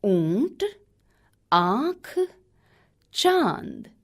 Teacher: जिन वर्णों पर अनुनासिक चंद्र बिंदु लगा रहता है उनके उच्चारण में हवा नाक और मुंह दोनों से बाहर निकलती है।